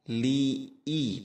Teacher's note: Wallaili idza, li i, tekanan hamzah pada i harus jelas, satu harakat